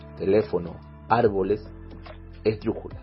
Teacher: Las palabras esdrújulas, también denominadas proparoxítonas. Es aquella palabra en que la mayor fuerza de voz recae en la antepenúltima sílaba.